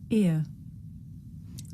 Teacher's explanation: This is a diphthong, a double vowel sound. The shape the mouth makes changes from the beginning of the sound to the end.